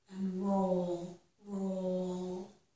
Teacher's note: for the r the tongue is not touching of the mouth but for the L it is